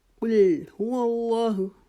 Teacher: कुल काफ को मोटा पढ़ेंगे, लाम को बारीक करेंगे